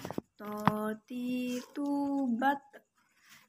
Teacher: Perbedaannya dengan huruf ta, huruf to tidak mengalirkan nafas dan huruf to diucapkan dengan suara menebal. Jangan lupa ketika kita melafalkan huruf to dalam keadaan mati, suaranya terdengar memantul.